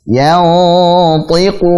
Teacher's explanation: Ta-nya tebal, kasrahnya jelas. Yantiqu, ku tebal, bukan yantiqu, ku, bukan kaf tapi ku, qaf.